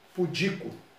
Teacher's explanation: A tônica, ela é paroxítona, é a segunda. Contando de trás para frente. Pudico. Não tem acento.